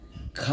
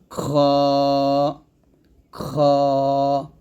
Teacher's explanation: খ টা আমরা কন্ঠের শেষ ভাগ হতে উচ্চারিত হবে এবং হামস বা বাতাস জারি থাকবে বাতাস বের হবে আওয়াজ জারি থাকবে হরফ উচ্চারণ মোটা হবে খ